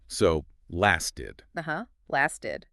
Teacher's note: Same pattern as started. The T in lasted often softens to a D sound too.